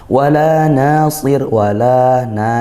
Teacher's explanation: rnya tarqiq karena ro sukun didahului kasrah sukunnya karena wakaf